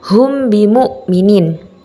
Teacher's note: ba sehingga berlakulah huruf mim sukun Ikhfa Syafawi Oleh karena itu bacaan tersebut harus dibaca samar-samar di bibir dan didengungkan